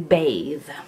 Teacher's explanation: the would be voiced interdental fricative as in bathe